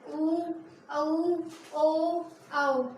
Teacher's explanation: इनके उच्चारण करने में हमारे जो होठों की आकृति है वो बनती है गोलाकार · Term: वृत्ताकार या गोलाकार